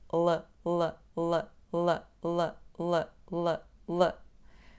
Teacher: Quando pronunciamos o som L, tocamos os dentes superiores com a língua